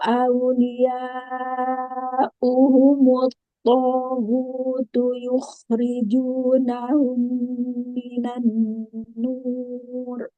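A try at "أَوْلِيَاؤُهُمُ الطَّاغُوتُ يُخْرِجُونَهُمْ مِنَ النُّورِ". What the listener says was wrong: Ya, sempurnakan lagi tasydidnya. Kurang sedikit tasydidnya. Nun.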